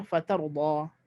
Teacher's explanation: kalau kita berhenti dengan mad asli lah, fatarda, dengan 2 harakat sahaja